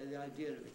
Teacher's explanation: 95 of all english people say the idea of it every time with an r in there